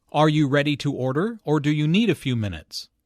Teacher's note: notice the rising intonation on order and the falling intonation on minutes